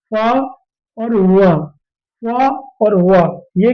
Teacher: ये दांत से भी और ओठ। दोनों जगह से बोले जाते हैं। इसलिए उन्हें दंतोष्ठ कहते हैं।